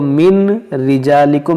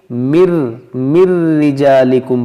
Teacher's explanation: نون ساکن کے بعد را ہے، تو یہاں پر ہم کریں گے ادغام بغیر غنہ کے، اس کو من رجالکم نہیں بلکہ مر رجالکم پڑھیں گے۔